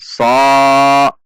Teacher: Tidak perlu dengan membulatkan bibir saat mengucapkannya ketika fathah, yaitu tidak dengan so namun so. Biasa saja so, namun dengan menaikkan pangkal lidah atau menegangkan pangkal lidah sehingga dia akan menaik ke atas. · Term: huruf shad